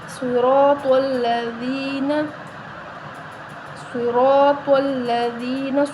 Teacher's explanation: صاد کو موٹا پڑھا جائے گا، را کو بھی موٹا پڑھا جائے گا اور تو کو بھی موٹا پڑھا جائے گا